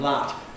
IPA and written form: lɑt (lot)